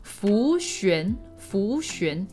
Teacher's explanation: The X is usually kind of like an SH sound in English.